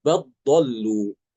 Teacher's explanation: lamnya tidak dibaca langsung masuk ke dad